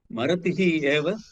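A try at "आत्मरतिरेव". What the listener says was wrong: Atma, the Atma is there. It is not Marati. Atma is there.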